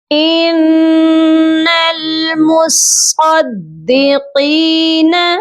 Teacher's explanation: قاف کو ہم ایک الف کی مقدار لمبا کریں گے کیونکہ قاف کے ساتھ یا مدہ ہے